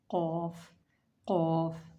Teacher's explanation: Qaf is pronounced when the root of our tongue touch the soft palate towards our throat.